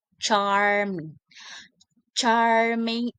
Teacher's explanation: ch is a voiceless post-alveolar affricate produced by the first stopping the airflow with the blade of the tongue behind the alveolar ridge, then realizing in with a friction.